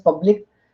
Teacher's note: in public we know there are two syllables, and first one is stressed